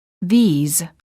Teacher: the word these is plural and is pronounced with a long vowel e and a z sound